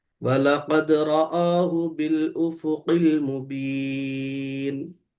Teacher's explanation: ہو کو نہیں کھینچ دینا، بل بول کے رک جانا، ایسا خوبصورتی ختم ہو جاتی.